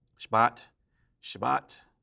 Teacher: the first syllable is very, very short. It's not a Shah, it's just a Sh.